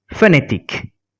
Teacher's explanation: we are not going to pronounce the nasal sound o but we are going to pronounce the n as it is